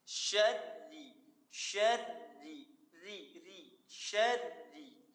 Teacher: Ra-nya di situ berbaris bawah atau kasrah. Makanya ra dibaca tipis atau tarqiq.